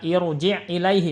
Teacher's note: Ini pada lafaz irji ini rohnya dibaca tebal ya. Kenapa? Karena ini kasrohnya kasroh arid.